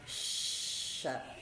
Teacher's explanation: makhrajnya huruf syin itu di tengah-tengah lidah kita ya. Ketemu langit-langit dan ada udara atau angin yang menyebar di tengah-tengah. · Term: sifat tafasyi